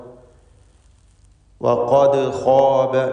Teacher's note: ഖാഫും അതിൻ്റെ മഖ്റജിൽ നിന്ന് വ്യക്തമാക്കി ഉച്ചരിക്കുക. നാവിൻ്റെ അങ്ങേയറ്റം അഖ്സൽ ലിസാനാണ് ഖാഫിൻ്റെ മഖ്റജ്.